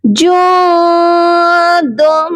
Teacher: نون ساکن ہے اور یہاں پر جو ہے اپنی آواز کو ہم ناک میں چھپا کر پڑھیں گے